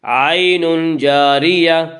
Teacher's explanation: عین جاریہ میں اخفاء حقیقی ہوگا۔